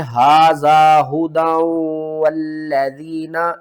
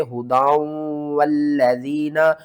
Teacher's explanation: ادغام مع الغنہ کریں گے. تنوین کے بعد آگے حروف یرملون میں سے واو آ رہا ہے